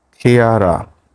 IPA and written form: ˈklɪərə (clearer)